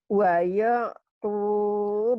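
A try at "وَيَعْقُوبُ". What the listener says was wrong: suka wayu, waya. Jangan wayu. Waya ya. Jangan wayu, waya.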